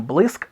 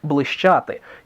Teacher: Так, ск перейшло у щ, а з ґ перейшло у ждж. Порівняйте праслов'янське бліскеті, яке перейшло у бліщеті, із сьогоднішнім блиск, блищати, чи, наприклад, тріска.